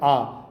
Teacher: जिस स्वर को बोलने में पूरा मुंह खुलता है उसको बोलते हैं विवृत स्वर